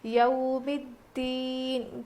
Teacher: حروف لین ہے نا، اس لیے ہم نرم آواز کے ساتھ جلدی ادا کر کے پڑھیں گے